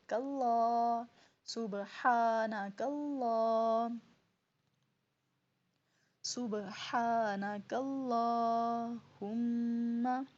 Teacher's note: آگے کاف باریک پڑھا جائے گا، اللہ کلام موٹا ہوگا